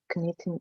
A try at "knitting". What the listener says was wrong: Knitting, K is not pronounced.